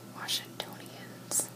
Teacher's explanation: residents are called Washingtonians, emphasis on the third syllable